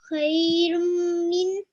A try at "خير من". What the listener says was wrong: Yeah, but you said minna, but there's no minna, okay? خير من.